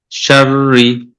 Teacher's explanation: র আগে রতে জের আছে, জের আছে, এটা হবে পাতলা